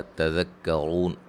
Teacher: तज़क्करून, रा को मोटा अदा करेंगे, वाव मद्दा है, वक्फ़न मद्दे आरिज़ वक्फ़ी होगी।